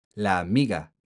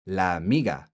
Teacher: zero pause in the airflow from la to amiga